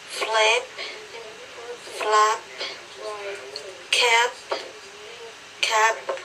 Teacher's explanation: you have to put more air out when you produce that p sound